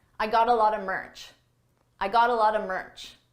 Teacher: Here I used a reduction. A lot of is pronounced a lotta, a lotta.